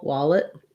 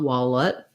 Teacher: some rounding on that lax vowel wallet um and then actually we probably have an e sound an unstressed second syllable wallet or even a bit of a schwa wallet